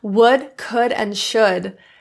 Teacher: We want to keep those L's silent.